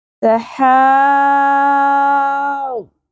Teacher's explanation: یہ بڑی مد ہے اور اس کے بعد تشدید آ رہی ہے، تو ہم نے اس مد کو 5 یا 6 الف کے برابر کھینچنا بھی ہے. اور واد پر حرف ہے، اس کو ہم نے اٹیچ بھی کرنا ہے، جوڑنا بھی ہے. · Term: مد لازم کلمی مثقل